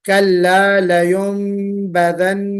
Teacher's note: نون ساکن کے بعد با آ گیا تو وہاں پہ ہم نے نون کی آواز کو میم سے بدل کر پڑھا تو اس کو ہم اقلاب کہتے ہیں.